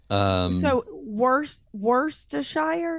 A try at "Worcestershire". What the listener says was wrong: No, there's no R in it. Worcestershire. Worcestershire.